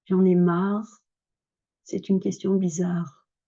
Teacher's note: J'en ai marre, c'est une question bizarre et le R, on l'entend à peine